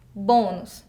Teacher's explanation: acento circunflexo na sílaba tônica bo, som fechado no o